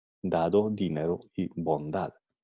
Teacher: un fonema sonoro cuyo punto de articulación es dental. Para articularlo, la punta de la lengua toca en los dientes. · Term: fonema oclusivo dental sonoro